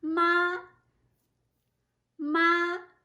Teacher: ma is m a with the high tone